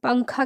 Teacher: آدھا نون نکالتے ہیں، لیکن پنکھا ہم لوگ جلدی بولتے ہیں